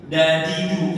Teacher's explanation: Itu kan kita D, kalau di Arab itu da sama dengan ta, da, bukan da. Kalau kita kan D itu agak mundur sedikit.